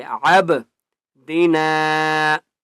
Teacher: با کے اوپر قلقلہ کریں گے